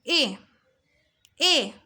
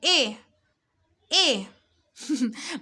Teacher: এ, এ উচ্চারণ করছি, এ, এ মানে আমার টোনটা চাপটা হচ্ছে সামনের দিকে, বাট জিব্বাটা রয়ে গেছে উচ্চ মধ্য লেভেলে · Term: উচ্চ মধ্য সম্মুখ